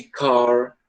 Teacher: Esse R que você enrola a língua. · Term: R retroflexo